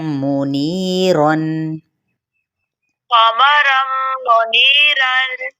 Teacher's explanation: تنوین زبر کو میم کے ساتھ ملائیں گے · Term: ادغام